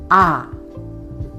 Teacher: vokal a terbuka dan jelas pengucapannya.